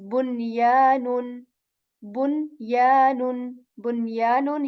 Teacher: We articulate the noon sakin here. We do not skip the sound, neither the nasal here.